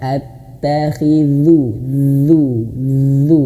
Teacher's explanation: Ujung lidahnya dikeluarkan sedikit dan sentuhkan ujung lidahnya di gigi seri atas. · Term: huruf dzal